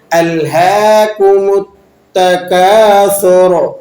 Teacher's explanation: را کو آپ نے پر کر کے یعنی موٹا کر کے ادا کرنا ہے